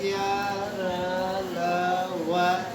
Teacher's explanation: ऐसे व्यंजन जिनको बोलने के लिए हमें कोई मुख का जो अंग है आपस में स्पर्श नहीं करता है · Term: अंतस्थ व्यंजन